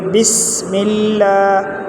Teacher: سین میں سٹی کی آواز نکالیں گے